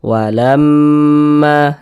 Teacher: Cara membacanya kita gunnahkan. Kita dengungkan. Jadi suaranya itu kita tahan, kita panjangkan sejenak. Walamma, di bagian lamnya itu kita tahan, kita panjangkan. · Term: gunnah musyaddadah